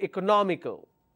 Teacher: no me five syllables but i a l is my ending the ending itself has two syllables and I need to stress on the third one